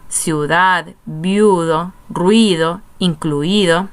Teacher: hay una secuencia de dos vocales en la misma sílaba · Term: diptongo